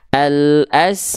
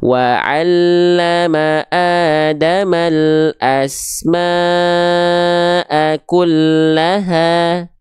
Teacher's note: Mad wajib mutasil itu bacaan simaknya ini dipanjangkan 5 harokat, boleh 4, boleh 5. Namun dalam Al-Quran ini nanti dipastikannya dia 5 harokat biar konsisten.